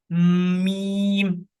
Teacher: मीम पे आपको जरा सा दोनों होंठों को दबाना पड़ता है, बंद करना पड़ता है